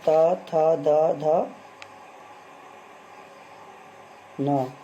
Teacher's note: दंत्य होता है आपका जो दांतों पर जीभ लगाने से बोला जाता है। त वर्ग जो आपका दंत होता है, त, थ, द, ध, न।